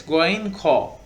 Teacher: These two letters are pronounced from the upper part of larynx.